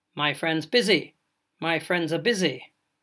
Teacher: but when spoken naturally my friends busy my friends are busy all you have especially in UK English to indicate that friends is plural is a barely pronounced schwa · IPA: maɪ frɛndz ˈbɪzi / maɪ frɛndz ə ˈbɪzi